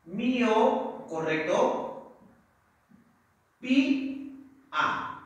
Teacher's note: Y acá pi es la que tiene la mayor fuerza de voz